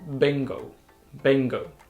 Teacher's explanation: I actually started vibrating my vocal cord before I even open my lips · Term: b sound